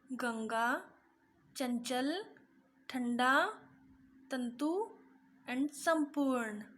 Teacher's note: अनुस्वार, इनका उच्चारण करते समय हवा नाक से बाहर आती है